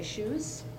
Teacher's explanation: will devoice final Z Sounds into a s sound